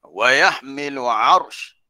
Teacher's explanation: arsh ra tu ditafkhimkan, ditebalkan.